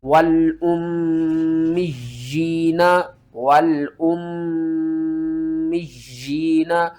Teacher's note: میم مشدد کے اوپر آپ نے غنہ کرنا ہے اور یا کو سختی کے ساتھ پڑھنا ہے، ایک مرتبہ میم کے ساتھ ملانا ہے اور دوسری مرتبہ یا کو نیچے کی طرف کھینچنا ہے، اور آگے اسلمتم والأمیین اسلمتم، آگے آ جائیں۔